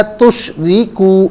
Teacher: रॉ के नीचे ज़ेर है, रॉ को बारीक पढ़ेंगे।